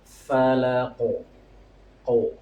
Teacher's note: qaf dalam keadaan sukun, yaitu memiliki sifat qalqalah, memantul suaranya ya. Falaq ya, dibarengin dengan memantul tapi harus tebal, soalnya huruf qa ini memiliki sifat tebal.